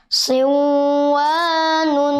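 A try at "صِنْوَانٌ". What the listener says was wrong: Nah, jangan didengungkan. Nun sukun jangan dimasukkan kepada wawu. Tetapi jelas sinwanun.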